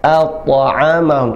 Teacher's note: a tipis, ta tebal, at'amahum, ta qalqalah. Selain dia tafkhim mufakham, dia juga huruf qalqalah, huruf ta.